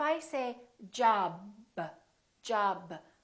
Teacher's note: I cannot continue the sound B. I cannot say job, b, b, b. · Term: stop